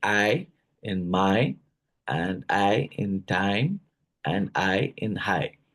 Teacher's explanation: dip tuns so common English dip Tong like closing dip Tong the tongue moves towards a more closed position